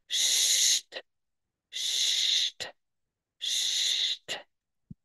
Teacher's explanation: You have pronunciation, but no voice. It's a little bit softer. It's the same as the stomach.